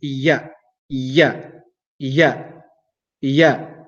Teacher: the letter ya is pronounced from the middle of the tongue.